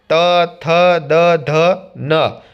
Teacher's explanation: દંત્ય. જીભ દાંતને અડે અને જે વર્ણોનો ઉચ્ચાર થાય તેને દંત્ય વર્ણો કહે છે.